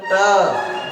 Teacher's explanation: जब आप इस ट को बोलोगे, जैसे मानक बोलते हैं ट, जब ट को बोलोगे तो जीभ के आगे वाला हिस्सा जिस भाग को टच करता है वो क्या है, वो मूर्धा है